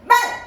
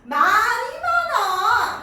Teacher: 동물을 뜻하는 말은 말! 하고 짧게 해요. 하지만 너 왜 이렇게 말이 많아? 말이 많아! 할 때 이 말은 자 보세요 여기 점 소리의 길이를 길게 발음합니다